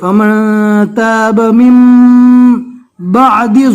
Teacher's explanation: نون ساکن کے بعد اگر با آوے تو نون ساکن کو میم سے بدل دیں گے